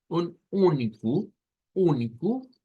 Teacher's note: tendríamos ahora otra vez nasalizado, una U nasalizada